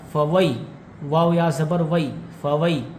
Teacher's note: یا حروف لین میں سے ہیں اس لیے یہ نہیں کھینچے گا